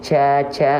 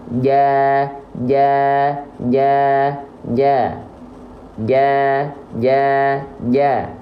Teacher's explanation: tapi Jim dilafalkan enggak boleh keluar nafas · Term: huruf Jim